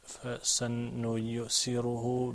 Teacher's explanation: you have three letters that are right after each other that are pronounced in just about the same place. You've got the sin, which is pronounced up front, and then you've got the noon, which is also pronounced up front, and then you've got the ya, which is pronounced up front.